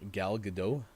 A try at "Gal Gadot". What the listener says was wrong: I think you pronounce the T, though. I think it's Gal Gadot. Gadot?